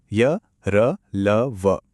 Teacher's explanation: इन्हें अंतस्थ क्यों कहते हैं? क्योंकि ये ना तो पूरी तरह से स्वर हैं और ना ही पूरी तरह से व्यंजन। ये कहीं बीच में हैं सेमी वोवेल्स की तरह।